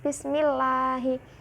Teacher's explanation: bismillahi ada lam jalalah tarkik dibacanya tipis